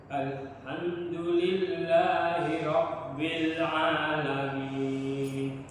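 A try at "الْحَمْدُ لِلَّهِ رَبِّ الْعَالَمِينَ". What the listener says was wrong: Jadi gini, pengucapan huruf ha sebelum masuk di huruf itu lepaskan nafas dulu. Al itu lepaskan dulu ya. tapi tidak terlalu panjang. Alhamdulillahi Rabbil Alamin.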